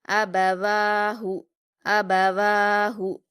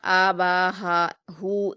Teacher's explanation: آپ اس میں بالکل بھی نہیں کھینچیں گے حمزہ اور با کو، نہ ہی ہا کو. یعنی آپ آ با ہا ہو اس طرح سے نہیں پڑھیں گے، بلکہ جلدی پڑھیں گے الف با، حمزہ با اور ہا کو.